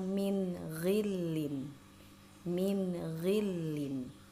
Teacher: nun sukun bertemu dengan huruf ghain atau setelah nun sukun di depannya ada huruf ghain, maka harus dibaca dengan jelas